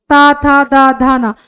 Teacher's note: आप जब दंत या फिर ता, था, दा का उच्चारण करते हैं तो आपकी जिह्वा जो है वो दांत से स्पर्श करती है, तब जाके ता, था, दा, धा, ना वर्णों का मतलब व्यंजनों का उच्चारण होता है।